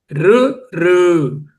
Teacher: రు రు అంటే దంతాల వెనుక భాగంలో ఉన్నటువంటి అంగుడు పార్ట్ని నాలుక టచ్ అవుతుంది